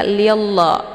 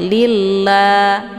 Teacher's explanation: lafdzul jalalahnya ini dibaca tipis ya, karena sebelum lafadz Allah berharokat kisrah